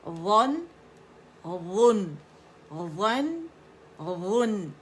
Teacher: نون کی باریکی بھی فیل کریں اور مزہ لیں اس کا کہ ناک میں نون کی آواز جاتی ہے